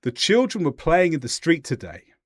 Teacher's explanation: Did you notice how I went down towards the end? · go down with your tone towards the end of what you say. That indicates completeness. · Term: down intonation